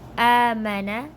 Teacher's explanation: besides the hamza there is an alif, so must stretch it for one alif. Okay, here you gotta stretch for a one alif mad آمن, and then this noon connects with the ra, so آمن الرا سولو Sulu.